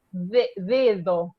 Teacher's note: Es una D relajada, sí. Es una D que cuando uno habla rápido, hasta se pierde, y esto pasa con muchos países.